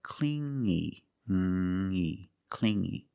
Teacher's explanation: You hear the sound only the nasal sound here, no G